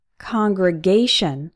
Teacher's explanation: This word is an exception. The stressed syllable is A, congregation, but we still pronounce con as in on.